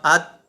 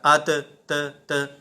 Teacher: تا کے اندر ہم نے آواز کو لوٹایا نہیں، بلکہ ہم نے پڑھا ات